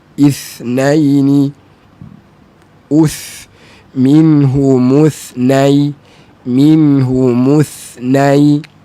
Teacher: Huruf tha tak ada sofir, dia hamas saja.